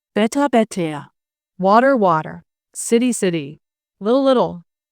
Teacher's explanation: You don't hear a T. You hear a quick D tap. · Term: American T flip